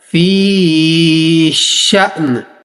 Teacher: यहाँ हमजा को साकिन करेंगे, झटका भी देंगे और आखिर में वक्त के दौरान नून को भी हमने साकिन करके पढ़ना है।